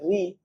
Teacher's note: यह मूर्धन्य स्वर है। अगर आप इसको जब बोलेंगे ऋ तो हमारा जो जीभ है वो दांत के पीछे साइड और तालू के आगे साइड जाके फंसता है। टकराता है।